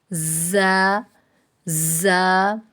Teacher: زبان کی نوک اور اوپر نیچے کے دانت جب آپس میں ملیں تو اس وقت زا اور سین، ان دونوں کی ادائیگی کے وقت سیٹی کی آواز آنی چاہیے۔